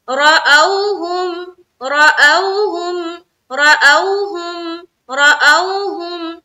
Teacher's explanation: रा के ऊपर जबर है तो मोटा रखना है रा को। हमजा वाव जबर औ, वाव साकिन से पहले क्या है, जबर है।